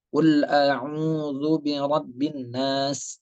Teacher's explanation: Itu ada alif lam disebut dengan alif lam syamsiyah. Ada alif dan lam tapi dia tidak terbaca.